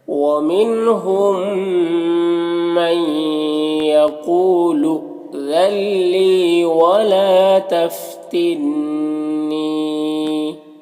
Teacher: یہاں پر نون ساکن کے بعد لام حروف یرملون میں سے تو نون کو لام سے مدغم کر کے بغیر غنہ کے پڑھیں گے، اس کو ادغام تام کہتے ہیں · ولا میں الف سے پہلے لام کے اوپر زبر ہے تو الف مدہ ہوگا، اسے ایک الف کے برابر کھینچیں گے۔ یہاں پر نون مشدد ہے تو نون میں غنہ ہوگا اور پھر یہاں پر یا ساکن سے پہلے نون کے نیچے زیر ہے تو یا مدہ ہوا، اسے ایک الف کے برابر کھینچ کر پڑھیں گے اس طرح سے۔